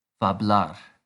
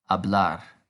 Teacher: f became h and as we know the h is silent